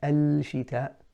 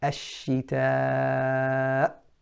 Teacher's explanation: We don't pronounce the lam. We do not say al-shita. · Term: Lam shamsiyah